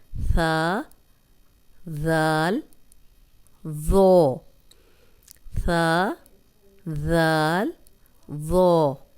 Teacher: زبان کی نوک جب اوپر والے 2 دانتوں کے سرے سے لگے تو اس سے ثا، ذال، ذو ادا ہوتے ہیں۔ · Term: نرم حروف